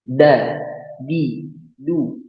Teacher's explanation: pada ujung lidah bertemu dengan ujung gigi seri atas.